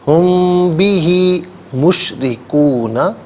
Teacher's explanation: اچھا ہم میں میم ساکن ہے، میم ساکن کے بعد با آ رہا ہے، تو میم ساکن کو غنے کے ساتھ ادا کریں گے.